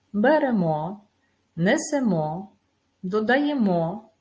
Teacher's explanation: увагу на те що в рецепті багато дієслів із закінченням н згідно з правилами вимови ми маємо наголошувати останній склад